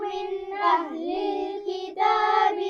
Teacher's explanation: من کے نون پر غنہ نہیں ہوگا کیونکہ اس کے بعد حمزہ ہے